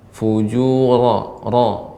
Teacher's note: ketika mengucap ra, fujura lebih ditebalkan.